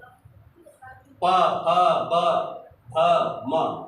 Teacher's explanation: ओठ आपका दोनों टच करेगा, प फ ब भ म, ये पूरा पवर्ग आपके ओठ से उच्चरित होता है।